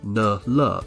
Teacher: they're both pronounced with the tip of your tongue just behind your teeth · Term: related initials